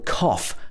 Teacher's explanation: in cough, the OUGH is pronounced off with the O sound. This is made at the back of your mouth at the bottom. It's very particular to the British pronunciation.